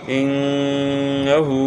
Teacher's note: نون مشدد میں غنہ کرنا ہے